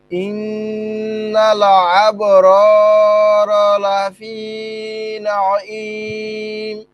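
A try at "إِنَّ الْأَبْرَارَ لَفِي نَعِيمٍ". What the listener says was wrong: না ইম আর তো আইনটা শক্ত নাঈম বলেন ইন্নাল আবরারা লাফি নাঈম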